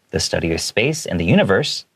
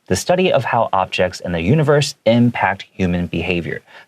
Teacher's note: I did a pause for the commas after astronomy and astrology, and I did a little bit of a dip in the way I read it. And I even read it a little bit quicker, just be like, oh, this is additional information, but I don't want you to lose track of the main sentence.